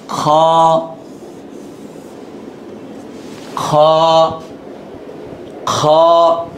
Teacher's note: গলার মধ্যে কেমন যেন একটা খুশখুশানি একটা ভাব থাকে